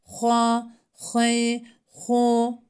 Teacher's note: Hı harfini boğaza hırıltılı bir şekilde çıkarıyoruz.